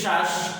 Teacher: যখন বলি শ্বাস তখন এই শয়ের অটা উচ্চারণ হয়নি, এই জন্য এখানেও হর্ষন্ত হয়েছে।